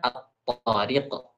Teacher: Kita idghamkan lam matinya ke dalam tha, maka jadilah at thiariq.